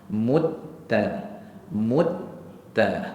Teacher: sebab sifat syiddah kerana dalam sifat huruf huruf ta bersifat dengan syadidah jadi suara dia akan tertahan